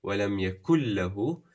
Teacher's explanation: we have the full idgham, where you're dropping the noon and pronouncing the lam.